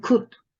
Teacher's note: This sound is articulated at the back of the tongue, and it's a closed vowel. Oral cavity is quite narrow when we make the sound.